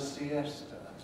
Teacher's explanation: It's got to have 3 syllables because the E is strong.